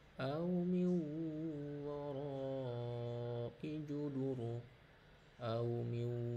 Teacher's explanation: nun mati menghadapi waw ditekan, ditasdidkan selama 2 ketukan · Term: idgham biguna